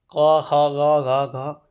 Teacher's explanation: ख ग घो कंठ से निकल रही है। इसकी जो ध्वनि है कंठ से निकल रही है तो इनका उच्चारण स्थान कंठ होता है। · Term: क वर्ग